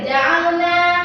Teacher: Nah, ini mad tabi'i. Panjangnya 1 alif 2 harokat.